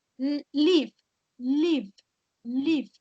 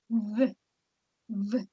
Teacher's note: lo van a pronunciar con los dientes superiores en su labio inferior y expulsando el aire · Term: B corta